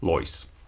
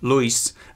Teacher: the diphthong oi developed into ui in non-final position in the traditional pronunciation